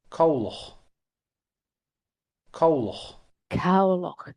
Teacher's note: we will expect in Munster that the ending will always be strongly sounded.